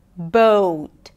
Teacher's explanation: notice that the O sound is changing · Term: long O